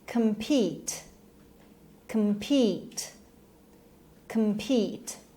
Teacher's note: Compete and the stress is on the second syllable. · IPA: /kəmˈpiːt/